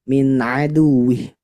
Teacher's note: huruf Ain nah usahakan bunyinya dari tenggorokan